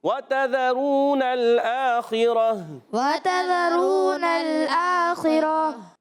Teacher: گول تا کو وقف کی صورت میں ہا سے بدل دیں گے · خا حروف مستعلیہ میں سے حلق کے اوپر والے حصے سے ادا ہوتا ہے، غین اور خا، اور خا کے نیچے زیر ہے، پھر بھی پر رہے گا، ٹھیک ہے؟ · حمزہ پر کھڑا زبر ہے، ایک الف کھینچنا ہے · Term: وقف بالابدال